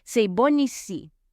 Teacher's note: And that's because when you say the word bon and it's followed by a word that starts with a vowel, so that's A, E, I, O, U, you can pronounce the N more clearly.